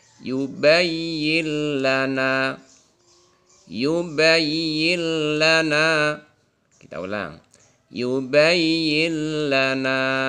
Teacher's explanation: Nun mati ketemu lam. Maka bunyi nunnya tidak ada, tidak terlihat, masuk ke dalam lam, kemudian tanpa disertai dengung.